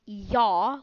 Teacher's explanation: like the Y sound you'll feel the like the middle of your tongue kind of go up against the hard part of your mouth